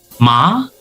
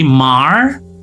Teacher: kalau di British English ini tidak ada R-nya. Ya, jadi R-nya itu hilang. Ma. Kemudian kalau di American ini ada ya.